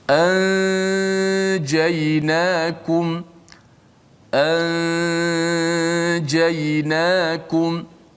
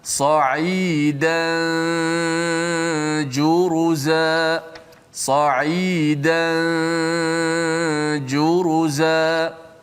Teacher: kita panjangkan gunnah, habis gunnah baru tekan jim. Mana kita letak nun tu di sisi, disembunyikan di sisi huruf jim.